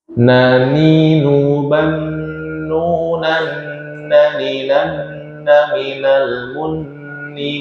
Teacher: nunnya itu yang sukun atau nanti ada tanwin langsung masuk ke huruf nun berikutnya disertai dengungan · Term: hukum idghamunah